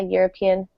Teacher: it's spelled with a vowel but we pronounce it with a y sound which is a consonant